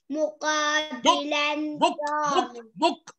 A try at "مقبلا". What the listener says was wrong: لا لا تفتح القاف هذا مقطع ساكن.